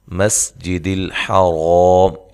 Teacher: سین کو باریک سیٹی سے ادا کرنا ہے، حا کو بھی واضح نکالنا ہے